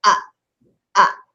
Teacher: and Hamza is a glottal stop